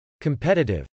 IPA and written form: kəmpˈɛtətɪv (competitive)